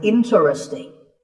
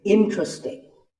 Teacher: This is mispronounced sometimes as interesting, but there are only 3 syllables, in-tra-sting, and the stress is on in